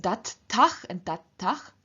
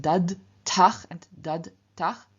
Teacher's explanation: in front of endings that begin with voiceless t and t, the voiced d at the end of the stem simply also loses its voice. So instead of dad tach and dad tach, we have dat tach and dat tach.